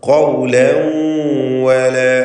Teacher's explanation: തൻവീനിനെ വാവിലേക്ക് ലയിപ്പിച്ച് മണിക്കുക. ഇദ്ഗാം ബിഗുന്ന നാഖിസ്.